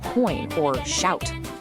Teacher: Your mouth actually changes physical position while saying the sound out loud. The sound starts as one vowel and literally glides into another. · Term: gliding vowels